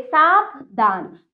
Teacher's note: चंद्र बिंदु वाला जो होता है इसे कहते हैं अनुनासिक। इसका उच्चारण नाक तथा मुख दोनों से होता है, इसका चिन्ह इसका चंद्र बिंदु के रूप में होता है।